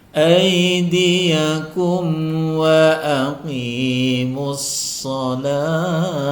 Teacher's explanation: Wa aqi-nya ditipiskan, kemudian qi dipanjangkan 2 harokat mad tabi'i.